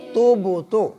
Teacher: با کے اوپر قلقلہ ہوگا، با حروف قلقلہ میں سے ہے، دوبارہ سے آواز آئے گی۔